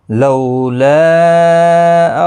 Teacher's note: لو واولین ہے تھوڑا نرمی کے ساتھ آدھے الف کی مقدار کے برابر کھینچ کر پڑھیں گے